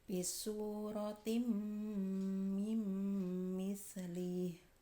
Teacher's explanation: Apabila ada nun sukun atau tanwin bertemu dengan hurufnya idgham bigunah, ya, nun, mim, wawu, maka nun sukun atau tanwinnya dimasukkan disertai dengan dengung